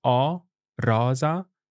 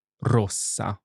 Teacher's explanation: I'm saying Rosa with an open o and Rosa with a closed o sound